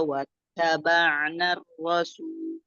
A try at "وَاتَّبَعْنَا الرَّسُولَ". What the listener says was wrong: Jangan rasul gitu, nggak disambungin. Wattaba'na rasul. Narro. Jadi jangan narro. Jangan kejedah.